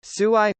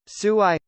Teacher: tsui with a rising tone means lovely or pretty but sui with a mid-tone means unlucky